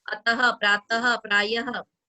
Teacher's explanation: Next is विसर्ग का उच्चारण बहुत कुछ ह की तरह होता है। यस, विसर्ग बोलते समय हम पीछे ह की आवाज निकालते हैं